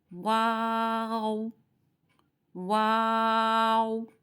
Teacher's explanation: شروع میں بھی ہونٹ گول کرنے ہیں اور لاسٹ والی اس پہ بھی آن کے ہونٹوں کو گول کرنا ہے۔ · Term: حروف شفویہ